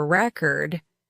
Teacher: When you want to say, I'm going to listen to a record, you stress the first syllable.